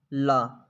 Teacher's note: ला जो है एक पार्श्विक व्यंजन है